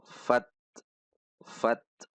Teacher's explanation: huruf ta sukun ada desis atau hembusan Udara setelah syiddah atau setelah tertahan